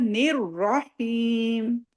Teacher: اس کو لائٹ نہ پڑے، نیر راہیم، نیر راہیم، را کے اوپر شدہ ہے، نون کو را سے ملانا ہے